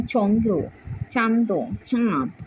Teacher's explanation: নাসিক্য ব্যঞ্জন লোপ পেয়েছে এবং পূর্ববর্তী স্বরধ্বনি অনুনাসিক হয়ে গেছে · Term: নাসিক্য ভবন